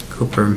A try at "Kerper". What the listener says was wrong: It's Kerper. The O is not pronounced. just can not see the O.